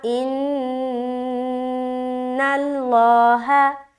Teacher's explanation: اچھا آگے چلیں گے، ان اللہ، نون مشدد کا غنہ، ان اللہ، لفظ اللہ کا لام موٹا اس لیے کیونکہ نون کے اوپر زبر ہے